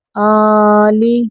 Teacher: الف کے اوپر کھڑی زبر آ گئی تو الف جو ہے یہ حمزہ بن گیا، تو جھٹکے سے اس کو پڑھنا ہے